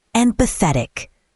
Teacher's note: Stress the third syllable, empathetic.